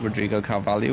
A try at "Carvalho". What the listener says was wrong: Carvalho. There's no I.